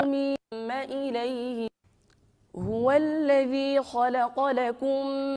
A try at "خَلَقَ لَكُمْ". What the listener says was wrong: Khalaqalakum, bukan khola kepancing khalaqalakum. Khalaqalakum.